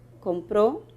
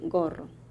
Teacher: Bueno, definiendo la primera vocal sería una fricativa velar sorda. La K sería una oclusiva velar sorda y la G sería una oclusiva velar sonora.